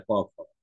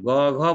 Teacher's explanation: ঠিক এখানে যখন তুমি গ ঘ বলছো, খেয়াল করছো গ ঘ, ওই যে একটা এই কম্পনটা অনুভব করানোর জন্য বা একটু স্পর্শ করানোর জন্য কম্পনের সাথে আমি বলেছিলাম মাথার তালুতে হাত দিয়ে দেখো, যে তুমি একটা কম্পন অনুভব করতে পারছো। যখন তুমি ক খ বলছো তখন এখানে কাঁপছে না ক খ, কিন্তু তুমি তখন গ ঘ বলছো, খেয়াল করো হাতের নিচের ভিতরে তালুতে একটা কম্পন তুমি টের পাও। ওই কম্পনটা আসলে স্বরতন্ত্রীতেও হচ্ছে।